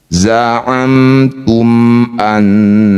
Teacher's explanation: Rapatkan bibir, tidak usah dengung semuanya. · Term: idhar syafawi